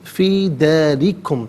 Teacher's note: داری میں را کے نیچے زیر ہے، را کو باریک کر کے پڑھا جائے گا۔